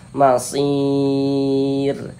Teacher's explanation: kalau kita berwaqf di huruf roh, kita baca masir. Jangan dibaca masiru, jangan.